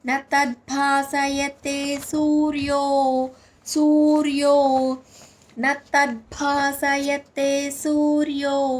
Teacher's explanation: తద్భా అక్కడ భా అనేది మహాప్రాణాక్షరం